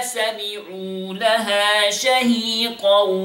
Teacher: We have 2 seconds here غنة إدغام بغنة